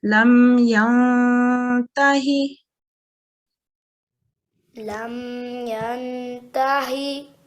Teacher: If you remember from one of the lessons, noon sakin, when you see a noon sakin, what's after is important. In this case, this is an ikhfa, and it's a slight nasalization.